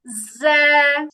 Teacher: জিহ্বার আগা নিচের দুই দাঁতের পিছনে লাগবে।